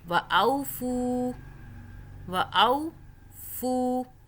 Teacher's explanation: واو جو ہے یہ جزم والا آ رہا ہے ساکن، اس سے پہلے زبر ہے، تو یہاں پہ یہ واو لین ہو رہا ہے، ہم مدہ نہیں کر رہے